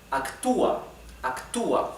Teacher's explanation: The stress is in U.